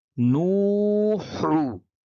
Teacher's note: نون واو پیش نو، ح پیش حو، نوحو، نوحو، نون واو پیش نو، ح پیش حو، نوحو. ح کو حلق سے نکالتے ہیں، اس کو حروف حلقی کہتے ہیں